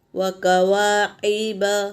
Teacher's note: کوا میں الف مدہ ہے، دیکھو اسے ہم ایک الف کے برابر کھینچیں گے